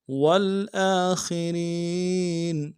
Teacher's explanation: ان الاولین والآخرین میں حمزہ کے اوپر کھڑا زبر ہے، ایک الف دال میں کھینچیں گے، خا کو موٹا کریں گے، را کو باریک کرتے ہوئے یا کے سامنے لانا ہے، یا مدہ ایک الف دال میں کھینچیں گے۔